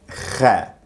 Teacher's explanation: It's almost like rolling an R, ra, but with the middle of your tongue, kha. And do make sure that you feel the middle of your tongue scratching against your soft palate, because I know some people hear the sound and they try to do something down here. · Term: kha sound